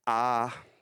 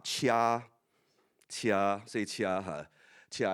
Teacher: So the first tone, if there's no markers, it's high and flat. So like ah.